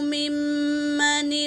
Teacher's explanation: میم حرکت ہے، دوسرے میم پر تشدید ہے تو اس کا گنہ ہوگا میری بہنوں۔ ایک الف کے مقدار ناک میں آواز لے جا کر غنہ کریں گے